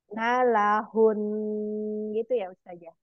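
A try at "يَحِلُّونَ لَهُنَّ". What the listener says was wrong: Ya, jangan nalahun karena na dengan la itu beda kata ya. Jadi kalau mau dari yahilun nalahun.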